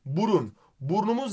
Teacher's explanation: Burnumuz derken u düşüyor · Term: ünlü düşmesi